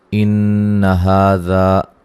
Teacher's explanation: نون مشدد پہ غنہ ضروری ہے، ہا مد اصلی ہے